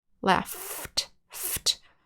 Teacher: So when you make the ft sound, you should not feel your voice box vibrate.